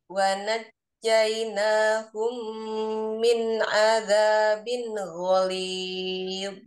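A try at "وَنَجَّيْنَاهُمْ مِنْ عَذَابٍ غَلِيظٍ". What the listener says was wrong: Sudah bagus, tinggal idharnya jangan dihentak-hentak ya. Wanajjaynahum min adzabin ghalib. Dilatih apa dibainiahkan ya, sedikit tertahan, sedikit mengalir, jadi jangan dihentak-hentak gitu ya. Wanajainahum min azabin ghaliz.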